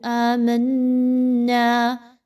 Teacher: میم و نون کو ملائیے، نون مشدد کا غنہ کیجیے۔ وعلیہ توکلنا، وعلیہ، لوگ اس کو پڑھتے ہیں عام طور پر وعلیہ، یہ غلط انداز ہے۔